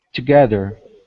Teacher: so the stress is on the second syllable in this word.